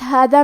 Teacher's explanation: کلمت ہادہ میں دال کی ادائیگی زبان کے سر اور اوپر والے دانتوں کے اندرونی کناروں سے ہے